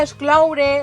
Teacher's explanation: la O és oberta perquè darrere tenim una U